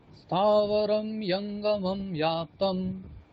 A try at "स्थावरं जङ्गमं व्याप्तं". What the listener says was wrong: ইয়ঙ্গমম নয়, ওটা বর্গীয় জ, সেহেতু জ ই বলতে হবে, ঠিক আছে? জ ইয় বললে হবে না, ঠিক আছে? স্থাবরং জঙ্গমম ব্যাপ্তম